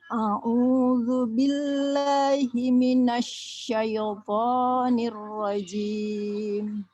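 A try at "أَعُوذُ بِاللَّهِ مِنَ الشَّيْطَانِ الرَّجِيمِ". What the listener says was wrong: Minasyaiton, syai. Jadi kasrohnya ya atau bunyi i-nya dibaca sempurna dulu. Minasyaitonir rajim.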